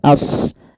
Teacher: Kemudian pada lafal ashabu, sadnya tebalkan as, jangan ashabu, jangan sin, tapi dia huruf sad sesuai dengan makhraj dan sifatnya.